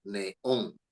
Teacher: Esta lleva acento porque se trata de una palabra aguda, porque la fuerza de voz está en on.